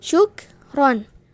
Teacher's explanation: di antara syuk plus ron itu adalah ada jeda sedikit, ada jeda sebentar